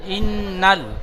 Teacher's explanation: নুনটি লামের সাথে যুক্ত হবে, টান গুন্না কিছু হবে না